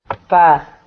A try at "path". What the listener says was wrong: Yeah. Good.